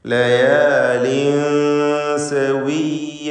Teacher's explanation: തൻവീനിനെ സീനിന് മുമ്പിൽ വന്നതിനാൽ ഇഖ്ഫാ ഹഖീഖി നൽകി മറച്ചു മണിക്കണം.